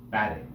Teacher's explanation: the English word batting it has two syllables back then take the first syllable back is said more loudly than the second syllable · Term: accent on the first syllable